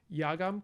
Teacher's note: the schwa at the end just drops out